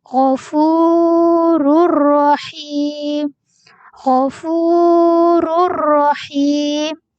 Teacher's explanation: hukum bacaan Idgham bilagunnah perlu dibaca dengan tidak dengung